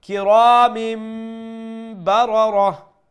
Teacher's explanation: which is converting the noon sound into a mim sound and reciting with nasal sound. Kiramim barara, both of the ras are full mouth and we stop with waqfil iskan. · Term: iqlab rule